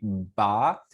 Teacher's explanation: when you make a ba sound you do it slowly ba you can actually feel your vocal cords start vibrating right before your lips part